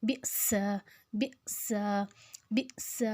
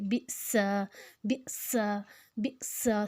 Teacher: اب حمزہ کے اوپر جازم ہے تو ہم اس کو جھٹکا دے کے پڑھیں گے